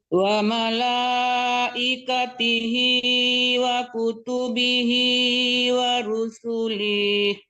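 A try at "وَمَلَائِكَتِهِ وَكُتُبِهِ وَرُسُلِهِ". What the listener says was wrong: Kenapa dipanjangkan lagi? Kan tadi udah dibilang tidak boleh panjang. Wa rusulih. Jangan wa rusulih. Linya itu kan nggak ada tanda panjang di situ kan?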